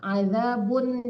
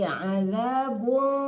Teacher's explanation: jangan diizharkan, itu ikhfa hakiki